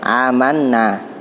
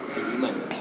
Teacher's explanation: Apabila hamzah bertemu dengan huruf mat, cara membacanya dipanjangkan 2 harokat. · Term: mat badal